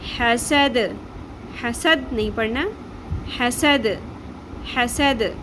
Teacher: حا زبر حا، سین زبر سا، حسا، دال زبر دا، حسد. اب یہاں پہ آیت ختم ہوگی تو دال کو ہم نے ساکن کرنا ہے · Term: قلقلہ